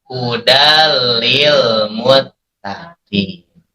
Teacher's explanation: Tanwinnya hilang, tidak dibaca hudan lagi, tapi dimasukkan ke la. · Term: idgham bila gun